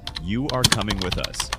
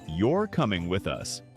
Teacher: Voice rises on coming and falls on us. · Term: Natural intonation